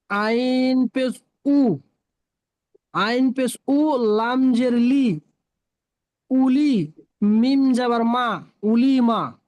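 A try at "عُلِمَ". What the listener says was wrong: মাশাআল্লাহ, সুন্দর বলেছেন, তবে অক্ষরগুলো টান হয়নি, টান দিয়ে পড়বেন।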